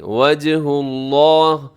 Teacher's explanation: لفظ اللہ کو موٹا پڑے گا، اس سے پہلے ہا کے اوپر پیش ہے